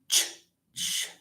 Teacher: It's voiceless. So ch is a voiceless alveopalatal.